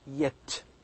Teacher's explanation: the sound Y is also voiced palatal, as in yet. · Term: voice palatal